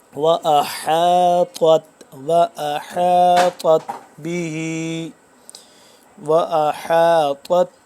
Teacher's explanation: طا کو ہم پڑھیں گے موٹا اور تا کو باریک